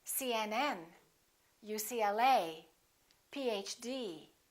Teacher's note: we stress the last letter of an abbreviation